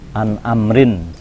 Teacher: Kita mengenal idhar, di mana nunnya dibaca jelas